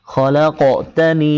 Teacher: এরপর খলাকতানি, খলাক, এখানে খ খালাক বলবেন না, খলাক, লাম কফকে ধরেছে এবং কফে সাকিন হওয়ার কারণে কলকলা করতে হবে।